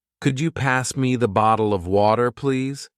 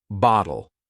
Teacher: Notice how they soften the T in bottle to almost sound like a D.